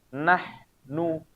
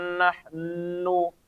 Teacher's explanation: Nah, bacaan nunnya ini paling kurang atau gunahnya ini paling kurang tingkatannya, yaitu ketika dia bacaannya dalam keadaan berharokat, ya. Ketika kita membaca huruf nun dan mim itu berharokat, maka dia gunahnya ada tapi paling kurang karena dia langsung pindah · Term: anqos